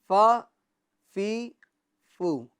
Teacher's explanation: بعض لوگ اس کو ف بولتے ہیں، ف، ف، یعنی دونوں ہونٹوں کو ملا دیتے ہیں، تو دونوں ہونٹوں کو ملا کر ف ادا نہیں ہوتا ہے، ف، پھی، پھو، یہ تو اردو کا ف ہو جائے گا، بلکہ ف، تو یہ اوپر کے دانت کا جو کنارہ ہے، اوپر کے دانت کا جو کنارہ ہے اور نچلے ہونٹ کا جو تر حصہ ہے وہاں سے ہمیں ادا کرنا ہے، ف، فی، فو۔